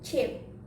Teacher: Affricate is the consonant ch, is the blade of the tongue to hard palate and do not vibration, or voiceless alveopalatal affricate